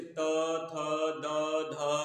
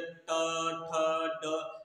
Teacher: जैसे त, थ, द, ध बोलेंगे तो जीभ का स्पर्श दांत में ही होगा। यदि हम दूसरी जगह करेंगे, मूर्धा में सड़ा देंगे, ट, ठ, ड, यानी कि त, थ, ट, ठ हो जाएगा।